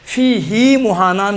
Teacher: हा से पहले साकिन है, लेकिन इसको खींच कर पढ़ा है